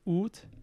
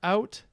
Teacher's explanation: After the great vowel shift, we get these long oos going to ow in modern English.